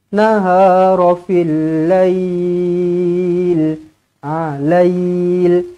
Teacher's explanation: Pastikan lail ni kita sebut panjang tau. Kita berhenti tu panjang tau. Nah, jangan pendek je. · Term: Madlin